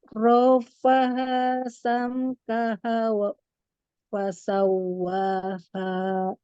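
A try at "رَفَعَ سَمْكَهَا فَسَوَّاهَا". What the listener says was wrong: Ya bukan wa. Ulang lagi.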